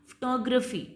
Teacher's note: जैसे फोटोग्राफ, तो यहाँ पे स्ट्रेस आपका स्टार्टिंग में है, फिर आपने बनाया फोटोग्राफी, आपका स्ट्रेस सेकंड पे चला गया